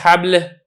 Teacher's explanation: جیسے کہ حبل، اب یہاں پہ دیکھیں لام ہے، آپ کی زبان اوپر کی طرف نہیں اٹھی ہے تو اسی لیے جو لام ہے یہ لام باریک رہا ہے